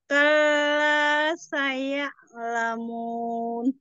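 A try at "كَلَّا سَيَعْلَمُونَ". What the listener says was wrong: Kalanya tidak perlu kal gitu ya. Tapi langsung kalla gitu.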